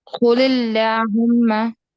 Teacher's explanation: لام اللہم کا لام باریک ہوگا، وجہ جو قل ہے اس کے نیچے اینڈ میں زیر آ رہی ہے، کسرہ آ رہی ہے